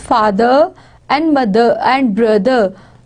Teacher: Rather than in British language, it is father and mother and brother. They will not pronounce R sound.